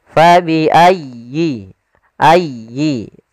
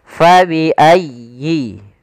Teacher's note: Pada lafal fabi'ayyi, di sini sempurnakan di tasydid huruf ya.